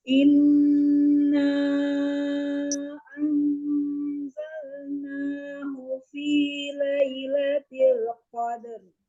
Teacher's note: huruf nun ketemu zai itu masuk ke ikhfa yang di tengah-tengah ya